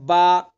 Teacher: बा को जो अदा किया जाता है दोनों होठों के तरी वाले हिस्से को मिला करर के अदा किया जाता है